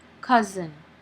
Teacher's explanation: the first vowel is o but this does not produce a short o sound but it produces a short u sound